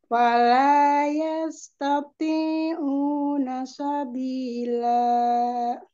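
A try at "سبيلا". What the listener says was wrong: Jangan Sabila. Sabila. Masih nanya juga jangan dipanjangin. Fala yastati'una sabila.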